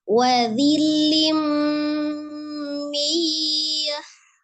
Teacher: Hati-hati ketika mu monyongkan dulu kedua bibirnya karena dia dhamma dan ada menghadapi waw sukun kemudian mimnya sukunkan di posisi semula sesuai dengan makhraj mim ya yang bertemunya dua bibir.